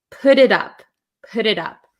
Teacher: when we have a T sandwiched between two vowels, a lot of the times in American English, it's going to turn into a flap T, which sounds like a D.